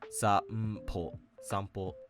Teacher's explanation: the n doesn't actually get pronounced as its usual kana reading. Instead, it actually assimilates into an m-like sound.